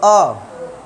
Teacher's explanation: आ बोलोगे तो जीभ का बीच वाला हिस्सा नीचे जाता होगा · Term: मध्य स्वर